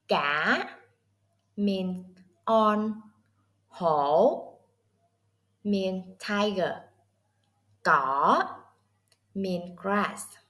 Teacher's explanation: The sound goes Down... pauses... and Up. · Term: Question Tone